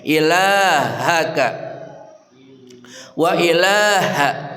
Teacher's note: ha dari pangkal kerongkongan